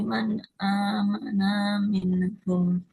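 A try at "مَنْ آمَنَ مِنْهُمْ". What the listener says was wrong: Gaunnya nggak panjang. Man amana minhum. Yang pertama, panjang pendeknya, panjang pendek ya.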